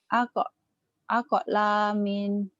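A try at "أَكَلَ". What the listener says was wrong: Nggak ada panjang. Akelamin gitu. Minnya pendek.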